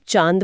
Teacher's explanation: जब आप चांद बोलते हैं तो आ की ध्वनि मुंह और नाक दोनों से एक साथ निकलती है। यह एक नासिक्य स्वर है।